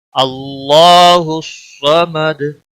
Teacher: दाल वक़फ़ की सूरत में साकिन होगा, इस पर कलकला भी होगा।